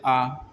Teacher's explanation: विवृत स्वर, इसमें क्या होता है? मुख पूरा खुला हुआ होता है